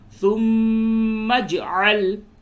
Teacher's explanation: سے اس را کو پر کریں گے، فصرهن إليك ثم اجعل، میم مشدد ہے اس پہ غنہ کیجئے